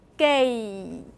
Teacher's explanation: So for the vowel in gate, I need to have that glide.